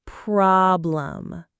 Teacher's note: And problem also has that open, relaxed ah sound.